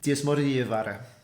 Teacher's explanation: she's making the FH silent, and then she's kind of just like smashing that a sound, the particle, into the rest of the word, so you don't have this sort of like double vowel sound.